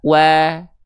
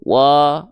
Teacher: Sedikit senyum itu analogi kita untuk mendapatkan karakter vokal A yang dia tipis.